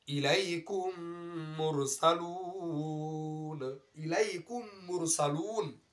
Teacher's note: মিম সাকিনের পরে মিম আসে তাহলে মিমকে মিমের সাথে মিলিয়ে ইদগাম করে পড়ে গুন্নার সহিত পড়তে হবে, আর এটাকে ইদগামে শফি বলা হয়।